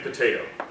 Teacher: The first T we aspirate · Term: aspiration